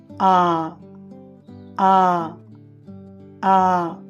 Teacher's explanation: తర్వాత లాంగ్ వొవెల్స్లో ఐదవది ఆ ఆ ఆ. దీనిని పలికేటప్పుడు నోరు మరియు పెదవులు విస్తరించిన స్థితిలో ఉండి నాలుక పూర్తిగా తెరచి నోటి లోపలికి ఉంటుంది. వోకల్ ట్రాక్ట్ యొక్క వెనుక భాగంలో వ్యక్తీకరించబడుతుంది.